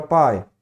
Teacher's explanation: A palavra pai tem uma vogal A e a semivogal I na mesma sílaba. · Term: ditongo